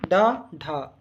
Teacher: जिनके उच्चारण में जीभ ऊपर उठकर तुरंत नीचे गिरती है उसे उत्क्षिप्त व्यंजन कहा जाता है।